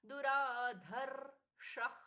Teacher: दुराधर्षः ध महाप्राण, दुराधर्षः, ख जैसा प्रश्वास